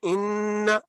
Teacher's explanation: जब आप इसको नाक पे उंगली रखें तो करें इन तो आप महसूस करते हैं की आवाज नाक के अंदर गुना के आवाज पैदा हो रही है